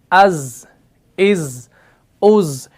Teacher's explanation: जा जो है ये मुरक्कक है, यानी ये बारीक पढ़ा जाने वाला हरफ है, इसको मोटा नहीं पढ़ा जाता क्योंकि इसके अंदर सिफत इस्तिफाल भी है।